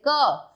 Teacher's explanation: आप क बोलते हो तो क में आपको अ की साउंड भी सुनाई देती है